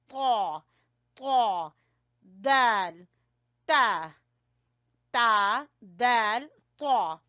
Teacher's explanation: जबान की नोक जब सामने वाले 2 दांतों की जड़ से लगे तो वहां से 3 हरूफ अदा होंगे